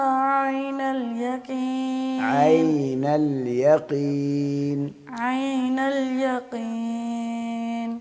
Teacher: جیسے شروع کریں حرف کو تو عین ہو، اس سے پہلے حمزہ کی آواز نہ آئے